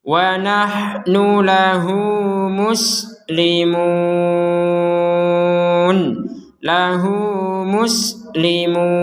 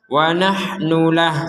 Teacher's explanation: Jadi dipanjangkan dua harokat ketika disambung dengan muslimun. Kalau tidak sambung maka tidak panjang.